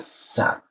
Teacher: Nah, desisnya itu posisinya di sini dia. Huruf sa, ujung lidah ditempelkan ke belakang gigi bagian bawah dia